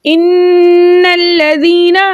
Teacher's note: इन्नल्लज़ीना हमजा के नीचे ज़ेर ज़ेर को बगैर खींचे बगैर चटका दिए मुतवस्सित और मारूफ तरीके से पढ़ते हैं, लेकिन आगे नून मुशद्दद हर दो मरतबा पढ़ा जाता है।